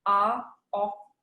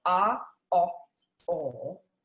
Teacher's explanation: in an rp standard rp accent you can have ah off and you see how far forward my lips go